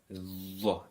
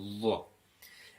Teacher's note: Now this is where you stick your tongue between your teeth, Dha, and pronounce with a full mouth, with a rounded mouth. And we know that because Dha, as you can see, is rounded in its shape.